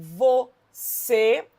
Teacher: em você, a sílaba tônica recaiu sobre a última, né, o C, portanto, oxítona terminada em E.